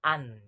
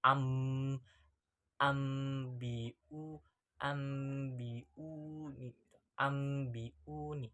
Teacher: Berarti apabila nun sukun atau tanwin diikuti dengan huruf iklab ba, maka suara atau bunyinya nun itu diganti dengan mim. Nah, itu dibacanya juga harus dengung.